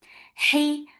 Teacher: Hey, half from your throat, middle part of your throat, for kasra give e sound